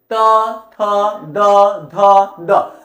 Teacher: अब ये जो दांत है, ये दांत और ये जो आपका ये जो लिप्स है, ये दांत और मसगूरे के जड़ में जाकर बोलता है